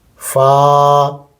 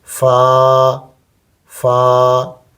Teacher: فا ہمارے اوپر کے دانت نچلے ہونٹ پر لگے